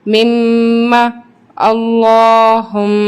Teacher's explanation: وقف کی صورت میں زبر امٹ ہو جائے گا لیکن غنہ باقی رہے گا